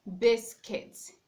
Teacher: In that word, we have the stress being placed on the first syllable, not the second syllable.